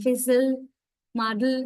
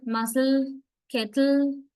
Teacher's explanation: Muzzle, kettle, they are, this part is syllable, but the thing is there's no vowel, only l. It itself serves as a vowel and forms a syllable. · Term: syllabic